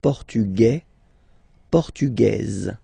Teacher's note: it will be only in this z sound the difference between the masculine form and the feminine form